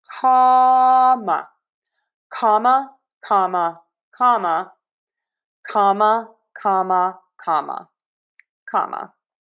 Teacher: open wide for that a and comma schwa in syllable number two